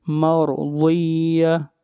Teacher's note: را کو موٹا پڑھیں گے اور ضاد حروف استعلاء میں سے ہے، ضاد کو بھی موٹا پڑھا جائے گا